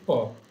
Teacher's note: both the lips are coming closer together and touching each other. So p is a kind of bilabial sound.